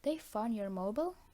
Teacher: In using a fall rise, B is expressing surprise that the mobile has been found, or that it is the mobile, as opposed to some other lost object that has been found.